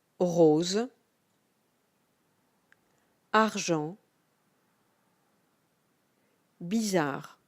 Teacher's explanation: The sound R is pronounced from the bottom of your throat. It's almost like if you were gargling. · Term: The R sound